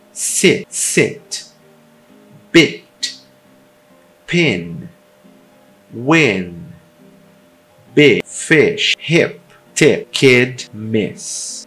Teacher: O short I, que é um som curto, mais relaxado. e com a língua um pouco mais baixa do que o I longo. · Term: I curto